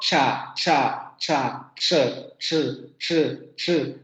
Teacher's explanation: se van a dar cuenta que justamente la lengua sube hacia los postalveolos